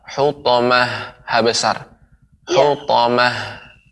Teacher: tal marbutoh ketika dia berada di akhir, ya, di akhir kalimat berhenti waqaf, gitu ya, maka dia berubah jadi ha